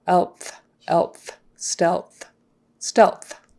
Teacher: So touch for L, blow for TH.